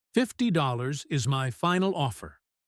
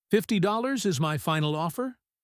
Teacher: When you make a firm decision, your intonation goes down. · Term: Falling intonation